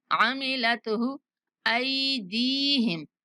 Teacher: وما عملتہ، ہا کو نہیں کھینچنا